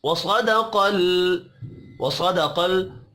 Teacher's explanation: साद और क़ाफ़ हुरूफ मुस्तअलिया है, दोनों को पुर पढ़ेंगे। लाम साकिन पर कलकला नहीं करना।